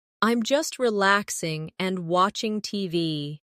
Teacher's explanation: No long pause between relaxing and and.